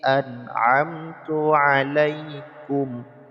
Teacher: An tidak boleh dengung karena nun sukun bertemu dengan ain